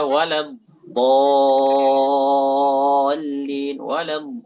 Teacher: Jadi yang disentuhkan itu tepi lidah ya, bukan ujung lidah. Itu dibelokkan.